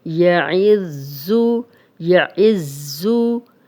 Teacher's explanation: اب یہ زا جو ہے یہ سیٹی والا ہے